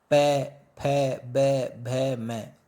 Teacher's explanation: प, फ, ब, भ, म, तो ये ओष्ठों के आधार पे बोले जाते हैं, तो इन्हें ओष्ठ्य कहा गया है।